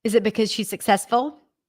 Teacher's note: yes no question going up and Pitch